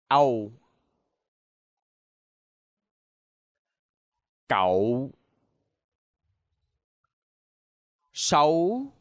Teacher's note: The next cluster is ow. This is a combination between a and o. This is similar as in slow.